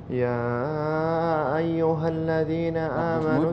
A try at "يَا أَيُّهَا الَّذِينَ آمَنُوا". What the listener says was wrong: زيد المد والشدة. يا أيها الذين.